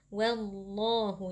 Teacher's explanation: atau dengan tafkhim karena huruf sebelumnya berharakat fathah yaitu wau wallahu jadi lamnya kita baca dengan mengangkat pangkal lidah